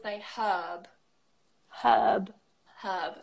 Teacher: There's no H in there. So we would say the H, but we wouldn't pronounce the R.